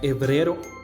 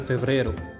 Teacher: Otro ejemplo de estas variaciones es que en Castilla la F desaparecía. Así se decía hebrero en lugar de febrero, helicidad en lugar de felicidad.